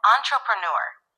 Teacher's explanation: The emphasis is on the last syllable, newer.